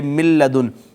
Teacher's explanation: نون اور لام دونوں قریب المخرج ہیں، قریب قریب سے ادا ہوتے ہیں، پہلا ساکن ہے دوسرا متحرک ہے، تو ہم پہلے کو دوسرے میں ضم کر دیں گے۔